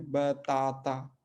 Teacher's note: तो उस पर हमने कुछ एग्जाम्पल देखे, जैसे यहाँ पे बाता, तो दोनों वॉवेल्स ओपन है बाता, लेकिन दूसरे वाले बताता, है ना, बताता, यहाँ पे देखिए 3 बार आ का इस्तेमाल कर रहे हैं, है ना। लेकिन पहला वाला आ जो है साइलेंट है, बाकी दोनों आ जो है ओपन है